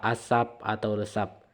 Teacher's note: P di luar posisi awal itu akan diucapkan tidak dengan cara meletup atau impulsif walaupun secara fonetis dituliskan sama dan sekalipun sesungguhnya cara